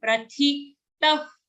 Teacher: Here it's a mahaprana tha sound. Prathitah. After ta, the visarga will be like a fa.